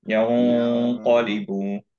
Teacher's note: কফের মাখরাজটা আরেকটু হেভি হবে, টাংটা, পিছের পার্টটা একটু উপরে উঠবে।